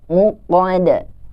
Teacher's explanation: Di ujung ayatnya juga ada qalqalah huruf dal yang harus dipantulkan.